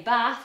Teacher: R which in standard British English is long and open but in northern English where I originate from it's the short ah most of the time in America it's the same as northern English that's a good